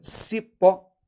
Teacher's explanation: a palavra Cipó ela é uma palavra oxítona última sílaba tônica terminado em ó letra ó com som aberto